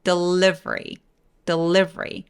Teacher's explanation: 딱 보기에는 delivery 이렇게 네 개의 소리를 보통 낼 것 같은데 그게 아니라 중간에 보이는 저 두 번째 e 소리를 사라지게 만듭니다. 그래서 vry를 한 번의 소리 내요. 그래서 delivery, delivery 강세가 이음절 i에 와요.